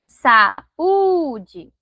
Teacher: Então, percebam que o U é uma sílaba tônica. Então, quando o i e o u tônico, né, ficarem sozinhos na separação silábica chamada de ato, vai receber acento, tá?